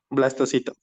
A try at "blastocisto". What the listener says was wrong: No, no es blastocito. No, es que le faltó una S nada más. Blastocisto.